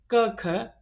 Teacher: कंठस्थ ध्वनियों में क ख आते हैं